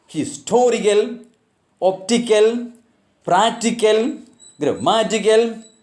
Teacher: take stress on the anti-penultimate syllable. That is, the third syllable from the end.